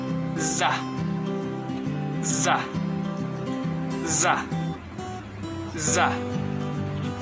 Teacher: konsonan lamino-alveolar geseran bersuara